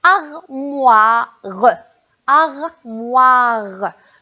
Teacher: on a le son wa vers la fin